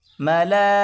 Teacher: یہاں پر بڑی مد ہے تو اس کو 4 الف کی مقدار کھینچ کر پڑھنا ہوگا